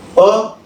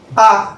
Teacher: बघा काय आहे, अ आणि आ हे एकाच उच्चार स्थानावरून निघले आणि दिसायला सारखे दिसत आहे. अ आ, फक्त एक ऱ्हस्व आहे, एक दीर्घ आहे, पण आहे मात्र सेम उच्चार, सारख्या उच्चार स्थानावर. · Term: सजातीय स्वर